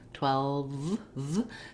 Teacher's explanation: The W of 12 has rounded lips, and the V at the end is my lower lip and upper teeth coming together, and the sound continuing, flowing through with a buzzing vibration. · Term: voiced V sound